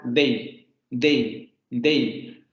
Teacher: Si yo digo day, lo estoy pronunciando con mi D dental, day, day, day.